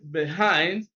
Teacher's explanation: behind stresses on the second